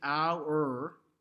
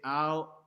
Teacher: Now, so when we have doc, we don't say, we cut the R out, first of all, but our, instead of saying our, we say ow, And so when we sing it, we say ow, we change that R into a schwa